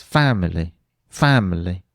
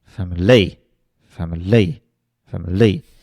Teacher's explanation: the last two syllables I'm almost not saying but you still recognize the word because I've got the stress right